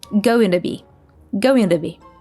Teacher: Instead of to, says duh, and she links all 3 words. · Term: tap T